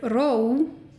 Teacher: For example, in the word ró, meaning calm or peace, there's an accent on the O, which makes it a diphthong, and the O moves towards an U vowel in this case